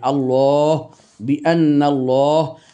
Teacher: আমরা বাংলায় বলি আল্লাহ আল্লাহ আল্লাহ, কিন্তু ওটাকে আপনি আরবিতে উচ্চারণ করতে চান তখন আপনাকে বলতে হবে আল্লাহ, আর যদি আল্লাহ শব্দটির পূর্বের অক্ষরটিতে জবর থাকে সেক্ষেত্রে আল্লাহ শব্দটি তখন মোটা হয়ে আসবে